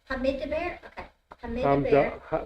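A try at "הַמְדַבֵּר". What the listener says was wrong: No, you don't pronounce the it. It's Hamdaber. you don't pronounce the two dot vowel if it's by itself. It's the end of a consonant. It's not pronounced at the end of a consonant.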